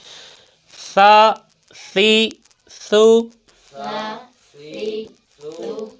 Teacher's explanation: اس کو نرمی کے ساتھ ادا کرنا، سیٹی کی آواز نہیں آنی چاہیے